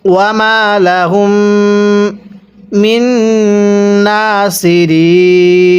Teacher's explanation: ওয়াকফের কারণে 3 আলিফ টান দিব